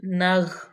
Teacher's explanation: نون کو غین میں ملا دیں گے